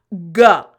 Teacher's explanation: the tip of your tongue does not touch the roof of your mouth. So it's not your whole tongue, it's just the back portion. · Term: the G sound